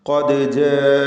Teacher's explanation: ഖാഫിന് തഫ്ഖീം കൊടുത്ത് ഉച്ചരിക്കുക. തടിപ്പിച്ച് ഉച്ചരിക്കേണ്ട അക്ഷരമാണ് ഖാഫ്. ദാലിൻ്റെ സുക്കൂൻ ഖൽഖല സുഗ്റ നൽകി ശബ്ദം ഹറക്കത്ത് പോലെ ചലിപ്പിക്കണം.